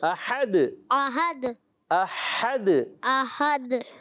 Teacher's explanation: ہا حلق کے درمیان والے حصے سے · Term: ہا کی ادائیگی